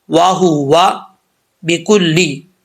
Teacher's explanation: آگے ہے جی وَهُوَ بِكُلِّ خَلْقٍ عَلِيمٌ۔ اب یہاں پر واو کو پڑھتے وقت ہونٹ گول کریں گے اور اس کو ہوا نہیں پڑھنا، وَهُوَ، یہ غلط ہے، واو زبر وا، وَهُوَ بِكُلِّ۔